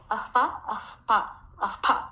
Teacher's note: ఉపద్మానియాలకు పెదవులు ఉత్పత్తి స్థానములు కనుక వీటిని ఓష్ట్యాలు అంటారు